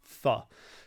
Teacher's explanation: if you blow the air through instead of having it as a stop becomes a th